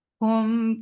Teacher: Circle your lips for dhamma and make it 2 counts long.